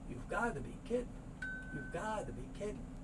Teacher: Even though it looks two big D's, it's just a soft D sound because this is the high syllable.